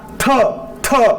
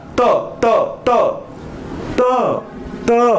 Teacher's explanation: ट अधिक ह मिळून थ बनला. म्हणजे थ हा महाप्राण आहे तर त हा अल्पप्राण आहे.